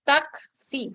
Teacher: A la oclusiva velar sorda, seguida de la fricativa alveolar sorda.